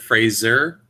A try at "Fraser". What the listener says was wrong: Yeah, Fraser. It's like F. It'd be like phrase and then SIR kind of, right? Like sir instead of jur.